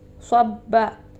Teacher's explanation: با کے اوپر تشدید ہے تو اس لیے ہم با کو دبائیں گے